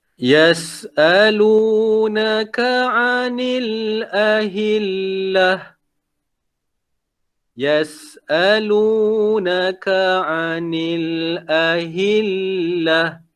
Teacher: Bila kita berhenti, ta marbutah tukar jadi ha.